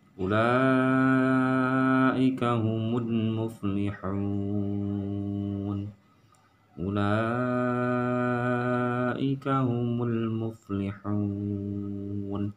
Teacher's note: hanya ha kecil, jadi ada di tenggorokan suaranya ha bukan ha besar